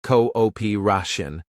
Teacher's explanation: Stress the third syllable.